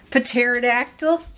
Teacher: a P in front of pterodactyl, but you're not pronouncing the P.